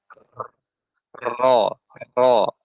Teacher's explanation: ro ro itu adalah huruf yang terjadi karena e apa namanya gerakan berulang ya pada lidah ya atas bawah atas bawah ya bisa dirasakan ya ya bergetar ro ro nah seperti itu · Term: takrir